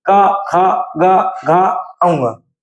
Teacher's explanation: का वर्ग को हम कंठ से बोलते हैं, यानी अगर हम का वर्ग का उच्चारण करें तो हमारी जीभ मुख के किसी भी हिस्से को स्पर्श नहीं करती है, सिर्फ कंठ आपका वाइब्रेट होता है